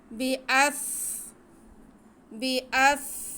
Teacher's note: अम्बिअहुम क़ाल या आदमु अम्बिअहुम बिअस्माइहिम, बा के नीचे ज़ेर, हमज़ा पे ज़बर और सीन साकिन, हमज़ा को हम सीन से मिलाएंगे, सीन को सीटी के आवाज़ से पढ़ेंगे।